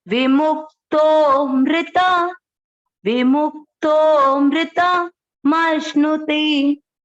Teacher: थोड़ा तो को लंबा खींचना है क्योंकि अवग्रह है।